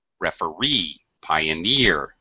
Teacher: actually, the primary stress is on the E sound.